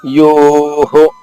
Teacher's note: యో ఉన్నప్పుడు విసర్గ హా రాదు, హో వస్తుంది